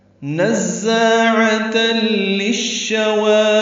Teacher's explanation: ہوئی آگ ہے، نزاعۃ للشوى، نون کو زا سے ملانا ہے، زا تیز صفیر کی آواز سے ادا کریں گے ، الف مدہ ہے، 2 حرکات لمبا، عین وسط حلق سے